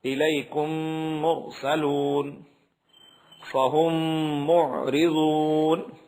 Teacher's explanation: تیسرا قاعدہ ادغام شفوی کا ہے۔ میم ساکن کے بعد میم آئے تو میم کو میم سے ملا کر غنے کے ساتھ پڑھا جائے گا، یعنی ناک میں آواز جائے گی مکمل طور پہ۔